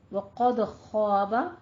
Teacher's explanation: خو کو بھی آپ نے پور رکھنا ہے اور الف مدہ ادا کرنی ہے